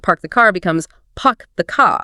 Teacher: In non-rootic accents, that R often disappears unless it's followed by a vowel sound. So car sounds more like ca and park the car becomes puck the car.